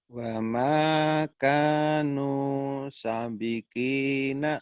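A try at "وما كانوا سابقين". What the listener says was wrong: Sa-nya panjang. Wa makanu sabikin. Wa makanu sabiqina.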